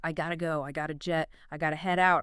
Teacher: The guide points out the use of gota, the reduction of got to.